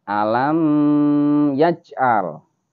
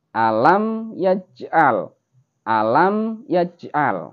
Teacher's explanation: mim yang di sini itu tidak boleh dibaca dengung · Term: idhar syafawi